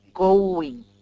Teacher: me a w so we gotta go and then an eng we need a w to link those two vowels